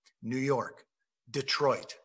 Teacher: So an iamb is a unit of two syllables that goes didum, New York, Detroit. First syllable unstressed, second syllable stressed. It goes didum. · An iamb is two syllables. And the first syllable is unstressed and the second is stressed. So an iamb is a unit of two syllables that goes didum, New York, Detroit.